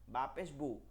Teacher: বা পায়ের মাখরাজ হচ্ছে দুই ঠোঁটের নরম জায়গা থেকে বা পেশ বু আর এই দুইটা ঠোঁট গোল করে বলতে হয়